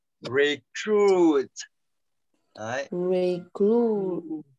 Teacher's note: nó sẽ âm u dài của mình, nó sẽ là âm chính và nó sẽ là trọng âm, và mình sẽ phải nhấn cái âm u dài đấy một chút.